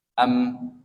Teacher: Maka mimnya dibaca jelas dan tidak ada gunnah. Am, tidak ada gunnah yang kamilah, ya.